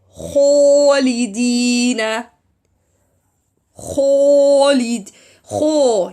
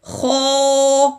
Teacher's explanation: Separate the kho, then make the sound of Alif heavy, not mixed with an wow